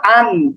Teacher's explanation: দুই জবর মানে শুধুমাত্র আ যে উচ্চারণ ছিল সেই উচ্চারণের সাথে একটা দন্তনা যুক্ত করব তাহলে আ দন্তান্য আন তাহলে হামজা দুই জবর আন হামজা দুই